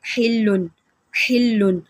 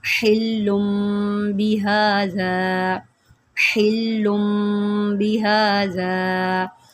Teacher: ویسے اگر یہاں پر اقلاب نہ ہوتا تو پڑھتے حلن حلن، لیکن یہاں پر میم میں ہم نے کیا کرنا ہے، تنوین کو میم سے بدل کر اخفا کرنا ہے